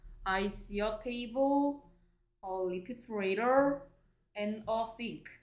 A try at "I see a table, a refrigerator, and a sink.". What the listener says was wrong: 오, 발음도 좋아졌네요.